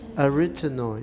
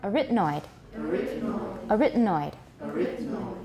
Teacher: Stress is on the second syllable.